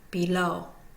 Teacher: the first syllable is unstressed the second syllable low is considered primary stress below going to hear the low more so than the B